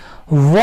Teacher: वकारस्य दंतोष्ठम, अर्थात व का उच्चारण स्थान है दांत और ओष्ठ। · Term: दंतोष्ठ वर्ण